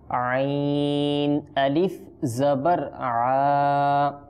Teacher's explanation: আইনের উচ্চারণ হয় হলকের অর্থাৎ কণ্ঠনালীর মধ্যকান থেকে। আইন, আইনের মাখরাজ, আইন উচ্চারণ করার স্থান হচ্ছে কণ্ঠনালীর মধ্যকান।